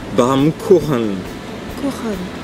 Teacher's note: ça racle un petit peu au fond de la gorge